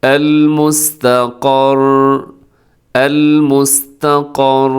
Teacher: تھوڑا سا زبان میں راشا سا محسوس ہوتا ہے، جو کہ بہت زیادہ نہیں ہونا چاہیے. تھوڑا سا مضبوطی کے ساتھ آپ جب رکیں گے تو ایسا راشا سا محسوس ہوگا آپ کو. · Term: تقریر